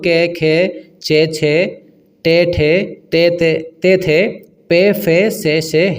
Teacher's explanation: इन्हे बोले तो आपका कंपन बिल्कुल नहीं हो रहा · हमारा स्वर तंत्र है उसमें कंपन हो उसे सघोष कहते हैं जिसमें कंपन न हो उसे हम अघोष कहते हैं